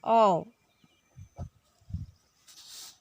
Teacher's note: दो अलग अलग ध्वनि निकल रहे हैं, ए और ऊ